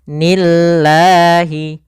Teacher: lafal Allah bila didahului dengan kasrah maka lafal lamnya tipis